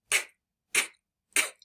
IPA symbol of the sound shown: k